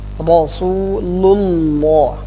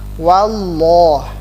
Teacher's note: kata Allah di dalam Al-Quran itu tebal ketika harokat sebelumnya fathah maupun dhammah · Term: Lam jadi tebal